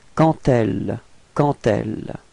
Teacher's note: Okay, so let's see where the liaison goes, and it goes between quand and elle. Okay, and here the D would be pronounced a bit more like a T